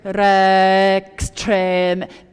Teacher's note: put that X on the next note. So rex trem, attach it to the beginning consonant of the next word